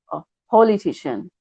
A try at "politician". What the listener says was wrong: Yeah, yeah, because it's just there's a po. There's a bit of a po in your pronunciation, po, and it's that o sound is the short vowel sound is an oh. There's no w in it at all. So politician.